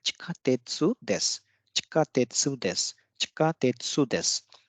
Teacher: यहाँ पे सु डिवाइस नहीं होगा, बल्कि जो अंत में जो देस है, देस में जो सु है वो डिवाइस हो जाएगा। तो यह इस तरह से इसका उच्चारण होगा चिकातेत्सु देस, चिकातेत्सु देस, चिकातेत्सु देस।